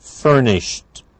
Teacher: It's a t at the end for the ed ending